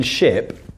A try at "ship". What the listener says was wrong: Okay, and the P? Put the P?